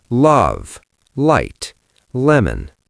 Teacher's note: The light L is at the start of a word. Love, light, lemon. It is clear, it is forward.